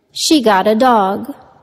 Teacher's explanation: the intonation went down to indicate the completion of the thought